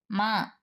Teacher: మ నాదం ఉభయం అనునాశకం